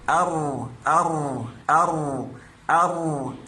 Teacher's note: के लिए इस आवाज को लंबा किया जा रहा है दरअसल यह आवाज तब पैदा होती है जब हमारी जबान की नोक ऊपर दो दांतों के मसूड़ों को टच तो करती है मगर दरमियान में यह होल रह जाता है जहां से आवाज गुजरती है क्योंकि दोनों साइड से तो यह मखर बंद हो जाता है